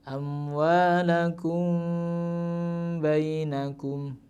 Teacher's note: ikhfa syafawi di situ apabila ada mim sukun bertemu dengan huruf ba, maka bacanya samar. Tetap ada dengungnya, tetapi dengungnya siap membaca huruf ba-nya.